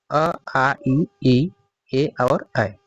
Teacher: वे स्वर जिनका उच्चारण करते समय ओष्ठ गोल नहीं होते, अपितु फैल जाते हैं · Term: अवृत्ताकार